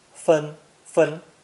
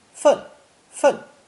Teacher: It's pronounced either first tone 分, 分, or fourth tone 分, 分.